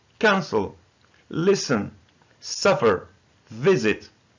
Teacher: It has two syllables, but the first syllable is stressed.